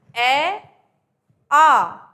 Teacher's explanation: हमने बोला ए आ, तो ए और आ को बोलते में मुंह कैसा खुल जाता है, बड़ा। ठीक है, तो जब भी मुंह बड़ा खुले और जीभ इधर उधर कहीं टच ना हो तो वो वर्ण हमारा कहाँ से बोला जाता है, कंठ से।